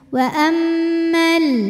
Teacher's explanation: dua harakat wa ammal nah dua harakatnya tuh hanya saat berhenti kalau wasal jadi gugur madnya mimnya pendekin wa ammal langsung tempel ke lam gugur madnya dinamakan dengan takhalus